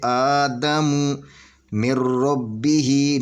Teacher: آدم من ربہ، نون ساکن کے بعد یہ را ہے، نون ساکن یا نون تنوین کے بعد اگر حروف را آ جائے وہاں پہ ادغام ہوگا تو یہ اس میم کو را کے ساتھ ملا کر پڑھیں گے، تو یہاں پہ غنہ نہیں ہوگا، بدون غنہ ہو ادغام کریں گے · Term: ادغام تام